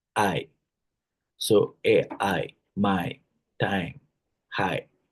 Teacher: starts with an open front vowel sound like A and glides to a near closed front vowel sound like E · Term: closing diphthongs